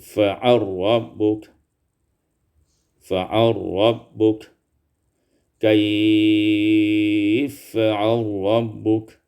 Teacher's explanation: Pada ayat yang ke-1 juga ini fa'ala rabbuk, ini diidghamkan idgham lam fi ra